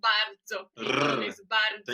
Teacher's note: Tem que tremer o R aqui.